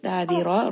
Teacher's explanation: Da is going to be a 2-count mad. Dabira, Ra is going to be heavy because it has a fatha.